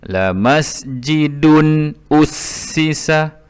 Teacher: La masjidun, kerana selepas tanwin ini berjumpa selepasnya huruf alif. Huruf alif adalah huruf izhar halqi, maka tanwinnya dibunyikan dengan jelas dan tiada dengung